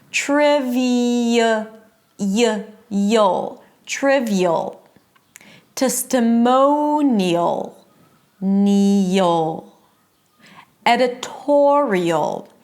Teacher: something in the shift between the high E and the schwa creates a Y sound · it's a high E sound, and then you shift to a schwa and a dark L. Ul.